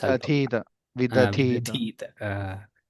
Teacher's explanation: The second dhakara is Mahaprana.